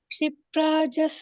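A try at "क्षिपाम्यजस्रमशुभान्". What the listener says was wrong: ಪ್ರ ಇಲ್ಲ ಮಾತಾಜಿ ಅಲ್ಲಿ ಪ್ರ ಬರೋದಿಲ್ಲ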